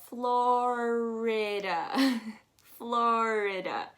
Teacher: florida is again one of those sounds that have that immediate rolling of the r